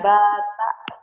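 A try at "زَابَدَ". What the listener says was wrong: Panjang za-nya. Panjang za-nya. Za-nya panjang. Za-nya doang yang panjang, badanya pendek. Zabada.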